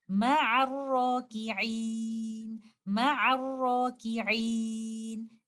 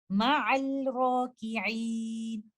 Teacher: you will merge letter lam completely into letter ra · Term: idgham shamsi